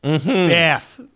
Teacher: you have to broaden the a meaning that the a in bath sounds a lot more like the a in water